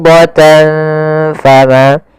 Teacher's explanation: Cara membacanya adalah menyamarkan suara tanwinnya kepada huruf fa. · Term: ikhfa